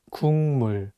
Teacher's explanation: The consonant 기역 is for G sound in English, so you can read it as 국. But it's paired with the nasal sound 미음, so it changes the pronunciation from a G sound to an NG sound, and you need to read it as 국물.